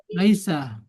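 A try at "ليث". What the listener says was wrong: Bukan, bukan. Laisa itu beda. Laisa itu pakai sin. Laisa itu pakai sin. Ini Lais, Laithun pakai sa.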